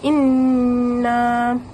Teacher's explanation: Untuk nun bersabdu, hujung lidah tu hendaklah ditekan pada gusi atas. Kemudian suara tu ditolak ke pangkal hidung.